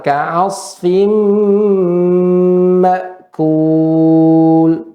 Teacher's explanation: tanwin bertemu dengan mim itu ditahannya lama, Nek. Ya, didengungkannya lama.